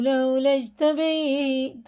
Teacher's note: اس میں جی میں قلقلہ اور یا ساکن سے پہلے زبر ہے تو جلدی پڑھیں گے